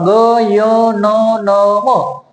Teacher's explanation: अनुनासिक म्हणण्याचं कारण याला असं की यांचा उच्चार करत असताना आपल्या नाकातून यांचा उच्चार होतो, म्हणून याला अनुनासिक असे म्हणतात